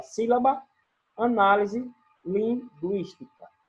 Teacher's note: O acento tônico recai na antepenúltima sílaba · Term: Proparoxítonos